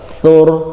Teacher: Perhatikan rohnya itu di waqaf, maka suara rohnya itu tebal lah.